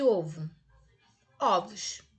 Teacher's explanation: O que era fechado no singular, ficou aberto quando foi para o plural.